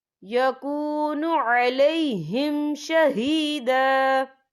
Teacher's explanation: یا دیکھیں یکون علیہم، یہاں میم ساکن ہے، میم ساکن کے بعد جو ہے شین آ رہا ہے، تو یہاں پر اظہار شفوی ہوگا، تو ہم اسے بنا غننے کے پڑھیں گے